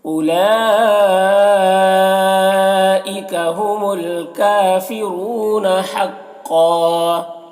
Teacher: قاف کو پر پڑھیں گے اور یہاں پر وقف کریں گے تو ایک زبر کے ساتھ الف پڑھیں گے